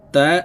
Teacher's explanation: আমরা এই তা খালি আলিফের সাথে এক আলিফ টেনে পড়বো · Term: মদের হরফ